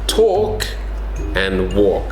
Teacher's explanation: The L is silent. So it's not walk.